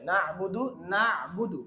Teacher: এই নুনটা স্বাভাবিক হয় কিন্তু আইনটা একটু শক্ত হয়